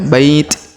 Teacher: Huruf ba kita panjangkan 2, 4 atau 6 harokat karena di depan huruf ba terdapat ya sukun sebelum huruf pemberhentian, dan huruf pemberhentian di sini huruf ti kita sukunkan atau kita matikan.